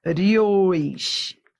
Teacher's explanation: Então, ó, rios, semivogal para vogal. Ora, eu tenho aqui um ditongo que vai do fraco para o forte, crescente.